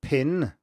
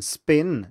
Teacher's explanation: the pin one is aspirated, it has the voice onset time when the voicing starts much later than the one in spin, but we still perceive both of these as the letter P, and most people can't even hear a difference between the two and think of them as the same sound, because they are one and the same phoneme in English.